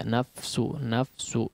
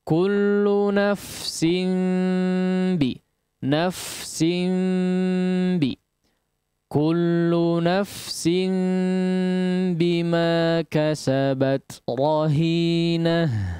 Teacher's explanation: Hamsnya diperhatikan ketika huruf fa yang diucapkan dengan bertanda sukun